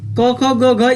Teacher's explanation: क ख ग घ, ये ध्वनियाँ जो दिया हुआ है ये कंठ होती हैं